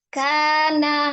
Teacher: Ini termasuk dalam mad tabii alif ya. Ada alif sebelumnya fathah, maka dibaca panjang 2 harokat ya